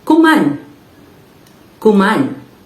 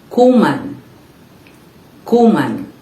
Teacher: this is a verb which is stressed on the second syllable